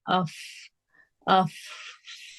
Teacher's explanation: ہمارے آگے کے دونوں دانتوں کے جو کنارے ہیں وہ نیچے ہونٹ کے اندرونی حصے سے لگ رہے ہیں. انر باٹم لپس ہمارے جو ہے وہ دانت ہمارے وہاں سے ٹچ ہو رہے ہیں. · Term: فا کا مخرج